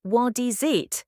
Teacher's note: The T sound at the end of what links with the I sound of is and the S sound of is links with the I sound of it. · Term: linking words